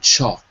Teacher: It's a slight L. It's a dark L, murky.